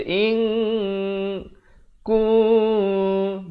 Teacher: ikhfa hakiki 2 harakat. Samarkan, jangan baca in jadi izhar. Ini kena baca in kun.